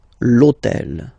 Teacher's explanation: in French we don't pronounce H, okay, so basically the first sound of the word is the vowel O